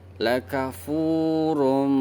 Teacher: Cara bacanya yaitu kita idghamkan tanwinnya ke huruf mim sehingga tanwinnya tidak terbaca dan suaranya keluar dari hidung. Dipanjangkan agak lama suara hidungnya. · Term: idgham bil ghunah